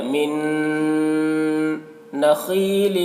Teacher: نون میں غنہ ہوگا، نون میں غنہ کریں گے، من نخیل، خا کو پر پڑھیں گے کیونکہ خا حروف مستعلیہ میں سے ہے